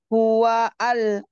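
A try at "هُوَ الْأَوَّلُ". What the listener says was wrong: Hual, bukan hua al. Hual. Sadda fathah. Wal awwa. Lu.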